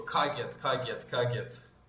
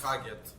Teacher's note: But in the villages you go kagyat. It's almost got like a T sound on the end of it, kagyat. And it's just way more, it just rolls off the tongue a lot easier.